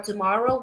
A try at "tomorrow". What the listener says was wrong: Tomorrow. Higher tone, higher intonation for more. Tomorrow.